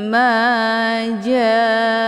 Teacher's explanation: Jaa ini dibaca panjang boleh empat atau lima kali ketukan karena ini dinamakan dengan mad wajib muttasil tandanya ada Mad thii